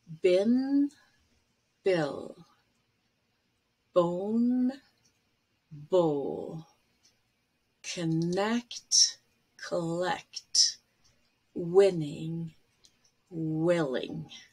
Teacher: when we make an n the air passage to the nose is open so you actually lower it and when you make an l you actually raise it and close the passage there so that no air goes through the nose here are some minimal pairs with n and l in initial